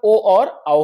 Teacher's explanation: कंठोष्ठम मतलब यह कंठोष्ठ वर्ण कहलाते हैं। कंठ और ओष्ठ दोनों से बोले जाते हैं